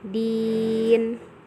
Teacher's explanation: Cara membacanya dengan dipanjangkan 2 sampai 6 harokat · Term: mad arid li sukun